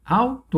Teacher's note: A sílaba tônica é o au